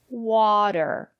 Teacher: because the syllable after the letter T is not stressed water the first syllable is stressed but the syllable after the letter T is not stressed